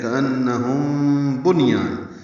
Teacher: کأنہم، ان میں نون مشدد پہ غنہ ہے، ہم میں میم ساکن کے بعد با آنے کی وجہ سے اخفاء شفوی ہے. کأنہم بنیان، بنیان ان میں نون ساکن ہے اور اس کے بعد یا آ رہا ہے.